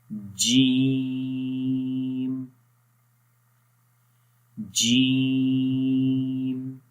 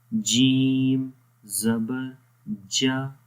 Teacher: جب زبان کا درمیان والا حصہ تالو کے درمیان والے حصے کے اوپر لگے گا، آپس میں جب وہ ملیں گے اس وقت جیم ادا ہوگا